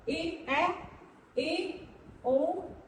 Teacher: जब पूरा ना खुल के उससे आधा खुले तो वो होते हैं अर्ध विव्रत स्वर